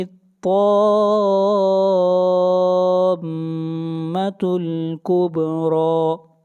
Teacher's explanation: اس مد کو کلمی مثقل کہتے ہیں، اس مد کو 5 الف کے برابر کھینچ کر پڑھیں گے